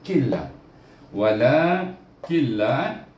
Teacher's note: kena baca idgham bila gunnah, tak ada dengung